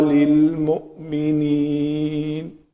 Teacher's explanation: میم کے اوپر پیش ہے، شفتین گول ہو جائیں گے